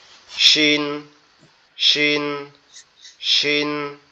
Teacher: উপরের দাঁত এবং নিচের দাঁতের পাটি একসাথে লাগবে, লেগে একটু শক্তভাবে উচ্চারিত হবে